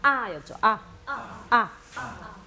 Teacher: 요 아자는 길고 약하게 아였죠